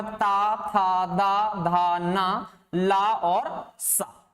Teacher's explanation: ता, था, दा, धा, ना, ला और सा। ये किससे हो गए? दंत से हो गए।